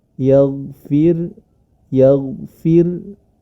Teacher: la sedangkan huruf ro ini yang sedang kita baca memiliki sifat memiliki harakat sukun yang didahului kasrah pada huruf Fa jadi harus kita baca tipis